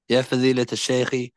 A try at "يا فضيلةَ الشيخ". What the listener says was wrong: you know what you're saying? You're saying يا فضيلة تش تش تش تي like that تش شيخ. No, there's a fatha here and it's intended. So you'll say يا فضيلة يا فضيلة الشيخ, not تش شيخ. You see, can you hear the difference?